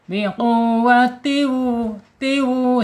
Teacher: Biqu penekanan di huruf wawu yang bertasjid.